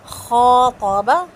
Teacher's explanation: خا کو لمبا کریں گے, طا اور با کو لمبا نہیں کریں گے